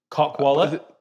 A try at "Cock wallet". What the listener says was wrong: There's more of a gap. Cock wallet.